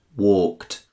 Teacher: The end sounds like t. This is because the K at the end of walk is what's known as an unvoiced sound, and verbs in this group are pronounced with the t at the end.